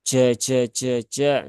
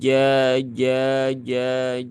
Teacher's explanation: Tengah lidah mendekati langit-langit atas